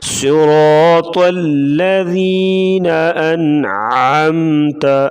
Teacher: ان پہ غنہ نہیں کریں گے، اظہار ہوگا ، یعنی عین حروف حلقی میں سے آ گیا، نون ساکن